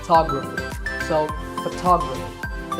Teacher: So the first syllable becomes ph, and the stress goes to the second syllable